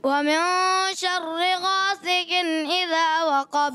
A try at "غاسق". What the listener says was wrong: غاسق قاف تھوڑا آپ کا باریک ہو جاتا ہے. ومن شر غاسق إذا وقب. غاسق غاسین کی بھی آواز سیٹھی ہے. غاسق إذا وقب.